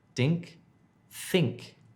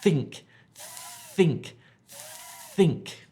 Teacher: You're blowing air out. You're putting your tongue below your top teeth and pushing air.